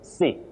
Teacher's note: Many people say sycophant, but we don't have that glide I. Sy, no. You simply say si.